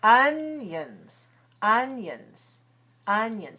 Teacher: all right so if I say it slowly onions onions onions the first syllable is strong the second syllable is weak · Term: schwa